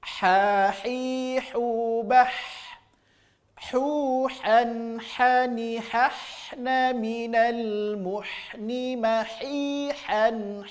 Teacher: Murni keluar dari tengah tenggorokan. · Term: wastul halqi